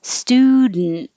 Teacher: get rid of the d and just make an in as its own syllable